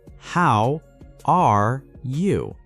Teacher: Notice the rising intonation at the end for a friendly question.